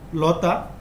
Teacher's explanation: লতা তাহলে এই ত ধ্বনিটা হচ্ছে অঘোষ অল্পপ্রাণ